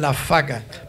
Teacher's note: cuando la B precedida de alveolar fricativa se funde con ella